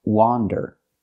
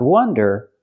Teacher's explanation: it comes from this word and the word is pronounced wander again it has the open a sound like hot and stop · For the first vowel, for the first syllable, use the open ah sound, like hot and stop.